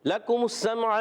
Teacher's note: لکم السمع میں لام پر زبر، کاف پر پیش، جہاں پیش آتی ہیں ہونٹ گول ہو جاتے ہیں